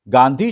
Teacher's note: लेकिन जो गांधी शब्द है, गांधी शब्द में आप ध्यान दीजिए अनुनासिकता है।